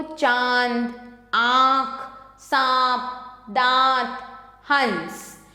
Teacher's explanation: इसमें शब्दों का उच्चारण नाक और मुख दोनों से किया जाता है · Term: अनुनासिक